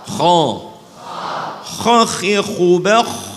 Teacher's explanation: Ya, posisinya tinggi. Maksudnya suaranya harus ditekan ke atas. Suaranya ditekan ke atas sehingga menelurkan sifat tafkhim.